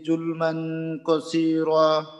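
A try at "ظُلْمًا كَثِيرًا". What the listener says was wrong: এখানে কাসীরা, কাফের উচ্চারণটা যেন আরেকটু স্পষ্ট হয়। যুলমান কাসীরা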